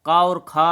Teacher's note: का और खा कंठ की ध्वनियाँ हैं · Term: कंठ ध्वनियाँ